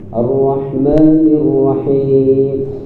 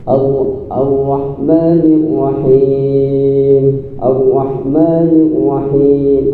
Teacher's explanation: Sifat takrir di dalam huruf ra yang bergetar itu kata para alim ulama getarannya hanya satu kali.